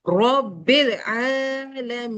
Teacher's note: तो आलमीन को जब मैं यहाँ पर स्टॉप करूंगी तो मैं मी को थ्री फिंगर खींचूंगी। मैंने नून को नहीं खींचना, मैंने मी को थ्री फिंगर खींचना है।